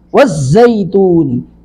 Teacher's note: والصيف والليل والتين والزيتون، واو کو زا سے ملائیں گے، والزیتون، نون کے نیچے زیر ہے، اس کو لمبا نہیں کریں گے